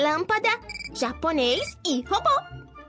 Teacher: O acento agudo é usado em uma infinidade de palavras para deixar as vogais A, E, I, O e U com um som mais aberto, como podemos observar em árvore, pés, índio, óculos e baú. Já o acento circunflexo só é usado com as vogais A, E e O, deixando essas letras com um som mais fechado, como em lâmpada, japonês e robô.